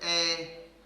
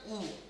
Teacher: ए में होठ गोल नहीं हो रहे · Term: अवृत्ताकार